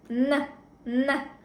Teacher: Н дыбысын айтқан кезде тіл ұшы тістің артына тіреледі.